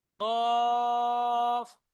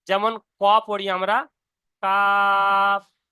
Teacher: যেখানে ছোট আলজিব রয়েছে, মানে ছোট যে গোস্তর টুকরো মতন ঝুলে আছে পুরো জীবের শেষে, ঠিক ওখান থেকে উচ্চারণ হবে কফ।